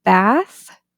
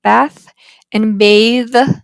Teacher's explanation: you can really highlight that difference in the word bath, bath using theta, bath, and bathe using eth.